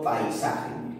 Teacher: se forma un diptongo decreciente por la unión de una vocal abierta y una vocal cerrada